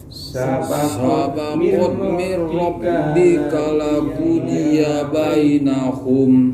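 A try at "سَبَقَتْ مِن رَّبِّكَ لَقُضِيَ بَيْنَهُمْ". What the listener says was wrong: Jangan berhenti di rabbika laqudiya, berarti panjang ya. Sabaqat min rabbika laqudiya bainahum.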